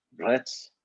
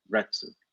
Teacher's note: the letter U at the end of Retsu, it's almost silent. So you could pronounce it even just Rets, or you could say Retsu, very pronounced, or it's kind of like you almost start saying the U and you drop it, Retsu.